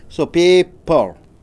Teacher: Since it is a noun, you have to stress on pay.